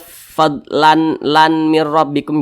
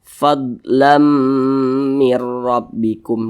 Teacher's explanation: Jadi bunyi tanwin ini masuk ke huruf mim. Jadi dibaca fadlam. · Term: idgham bi gunnah